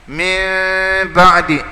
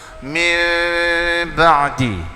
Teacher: Iqlab ni jangan tutup mulut. Yang kata min ba'di, jangan nganga mulut. Ya. Antara nganga dengan tutup.